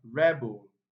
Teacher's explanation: that's a noun, so it's stressed on the first syllable